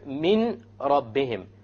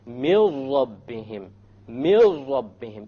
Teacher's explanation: You drop the noon and you merge the meme with the ra. And you say, mil rabbihim, mil rabbihim, immediately. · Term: idgham without ghunna